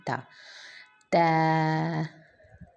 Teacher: الف، الف، با، با کی ادائیگی کے لیے ہونٹوں کے گیلے حصے کو آپس میں ملانا ہے اور پھر ہم نے ادا کرنا ہے با، تا، تا کے لیے ہم نے ہونٹوں کے جو زبان کی نوک ہے اس کو اوپر کے دونوں دانتوں کی جڑ پہ لگانی ہے